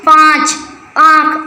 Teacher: ऐसे बहुत सारे ऐसे वर्ड हैं जो हम मुंह और नाक से दोनों से बोले जाते हैं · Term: अनुनासिक